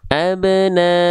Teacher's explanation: Dibacanya boleh 4 harokat, boleh 5 harokat ya. · MW mad wajib muttasil panjangkan 5 harokat.